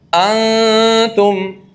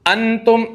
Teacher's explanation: नून साकिन को छुपा कर अदा करना नाक में आवाज जाए नून छुप जाए ना जाहिर ना हो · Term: इफा